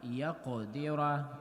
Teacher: qaf heavy with qalqala, يَقْدِرَ, and ra has fatha, again we have ra heavy.